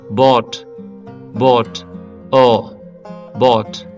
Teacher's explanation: అ ని మనం అంటే లిప్స్ ని రౌండ్ చేసి పలికినట్లయితే ఓ వస్తుందన్నమాట · లిప్స్ ని రౌండ్ చేసిన తర్వాత దీర్ఘం కూడా ఇవ్వాలి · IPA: / ɔː /, ɔː